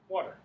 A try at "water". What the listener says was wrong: water, not woulda. Water.